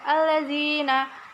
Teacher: dibaca alif lam syamsiah karena huruf alif lam bertemu dengan huruf syamsiah lam bertasydid